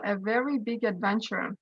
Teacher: in the word very the first syllable is emphasized · here we can basically observe a weak strong weak strong rhythmic pattern